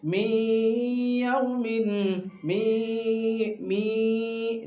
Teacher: نون کی آواز کو ناک میں چھپا رہا ہے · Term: گنہ